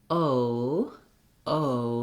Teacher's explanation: dictionary that there are two symbols for the o that's because we start in one mouth position and we finished in another we glide between two positions to make this vowel · we go from that tense o and then we close the jaw lift the tongue and relax the lips a little bit